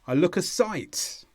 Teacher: sometimes you can place it on look but if you're speaking quickly it will all go on site